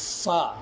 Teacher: اوپر کے دانت نیچے کے ہونٹ کے ساتھ لگنے سے